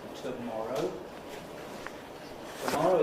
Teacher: tomorrow is stressed on the second syllable